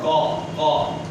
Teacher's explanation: زبان کی جڑ اور اوپر کے تالو سے، تو یہاں سے قاف ادا ہوتا ہے۔ قاف جو اس طرح کب ادا کرتا ہے نا، کبھی کی آواز ہے قاف قاف، یہ آواز ہے قاف کی۔